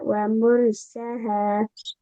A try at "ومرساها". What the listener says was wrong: ساہا، سین پہ کھڑی زبر ہے نا، پیج کی طرف۔